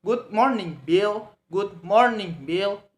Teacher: We say it lower and go higher.